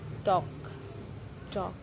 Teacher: di mana lidah menyentuh gusi bagian atas gusi atau gigi bagian atas dan merupakan bunyi datupan flosif.